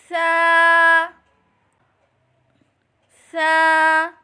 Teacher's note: زبان کا سر اور اوپر کے دانتوں کی اندرونی کنارے سے ادا کریں